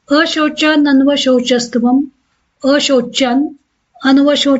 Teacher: इथ मागच्या व्यंजनात पुढचा स्वर मिसळला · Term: संधी